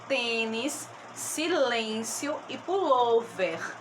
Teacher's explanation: a sílaba tônica é a penúltima